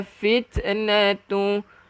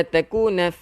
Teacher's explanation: ta ni kita keluarkan angin yang dipanggil hamas. Bukan kita kena lantunkan.